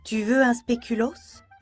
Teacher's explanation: Pour la question informelle, la voix part du niveau 2 et monte au niveau 4.